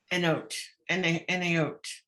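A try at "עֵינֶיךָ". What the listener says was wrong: No, we don't hear the yods at all. It's a necha. necha. Yods. Yuds. So it's einecha.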